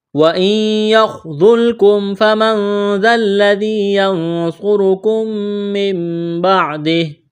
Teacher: یہاں پر خا کو موٹا کرنا ہے، ذال کو نرم کرنا ہے